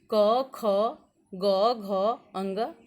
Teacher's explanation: इसको हम क वर्ग कहते हैं। इसका उच्चारण स्थान कंठ है।